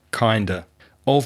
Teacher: of in both of these expressions kind of and sort of very often of becomes weak when it's in connected speech so the pronunciation of sort of would be sorter and kind